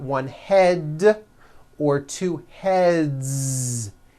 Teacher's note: Another word, head, ends with a voiced D.